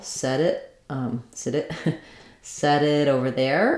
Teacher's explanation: it's going to turn again to that flap sound like the light D